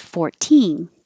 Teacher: if it's the smaller number it can be pronounced 14 with stress on teen